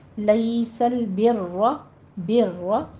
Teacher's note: بر میں را کو ہم مفخم پڑھیں گے اور اس کے پر ہلکی سی تکرار بھی ہوگی. لیس البر، بر، اس کو ہونٹوں کو آپ نے گول نہیں کرنا را کو مفخم کرنے کے لیے، بس صرف آپ نے سائڈوں سے تھوڑا سا زبان کو سائڈوں سے اٹھانا ہے.